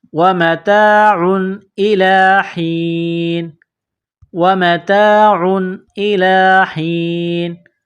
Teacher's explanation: جب اس آیت پر رکیں گے وقف کریں گے تو نون کو سائلنٹ کریں گے